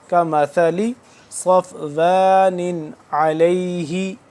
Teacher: صفوان یہ دونوں تنوین تو ہے اس کے نیچے، لیکن اس کے بعد حروف ہلکی کا عین ہے، یہاں پہ ہم اخفا یا غنہ نہیں کریں گے